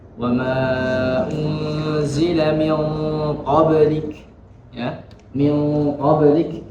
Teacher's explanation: Min qablik. Nah, itu nun sukun bertemu dengan huruf qaf. Maka di situ terjadi bacaan ikhfa yang ditebalkan